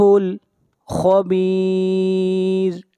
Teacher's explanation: خا کو موٹا پڑھیں گے، خا حروف مستعلیہ میں سے ہے